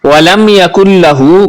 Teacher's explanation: میم ساکن کے بعد یا ہے، غنہ نہیں کریں گے